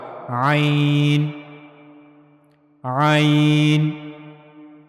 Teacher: ऐन की अदायगी के लिए गले का दरमियानी हिस्सा इस्तेमाल होगा। · عین کی ادائیگی کے لیے گلے کا درمیانی حصہ استعمال ہوگا۔ یہ ہم پہلے پڑھ چکے ہیں کہ گلے کے تین حصے ہیں، سب سے اوپر والا حصہ جو منہ کی طرف والا ہے، اس کے بعد گلے کا درمیانی حصہ، اور پھر گلے کا سب سے نچلا حصہ جو سینے کی طرف والا ہے۔